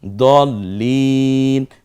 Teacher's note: পরে আবার ল, জজমের মতো আসুন, আবার লয়ের নিচে রস্বীকার, কারণ তাসদিদ যেই অক্ষরের উপরে হয় সেটা দ্বিতীয় উচ্চারণ হয়, 2 বার উচ্চারণ করতে হয়